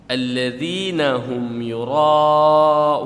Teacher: alladzina hum yura'un. Nah, ra'nya panjang, ada alif ketemu hamzah, berarti mad wajib muttasil. Ada hamzah, artinya yura'un, putus, bukan yura'un, beda.